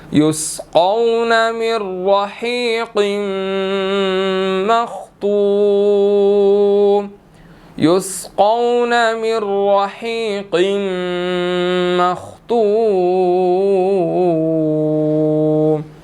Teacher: اسی طرح من رحیق، را کو موٹا ادا کریں گے، اور قاف جو ہے وہ آگے میم کے ساتھ مل رہا ہے اور میم مشدد ہو گیا